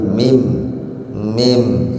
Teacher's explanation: Pokoknya bab mim itu syafawi. Syafawi itu bibir, karena huruf mim itu huruf bibir. Dari mingkem dibuka sedikit, mingkem lagi, mim ya.